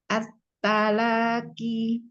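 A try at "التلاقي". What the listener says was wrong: Off-nya jangan ada hamas. At-talaqi. At-talaqi.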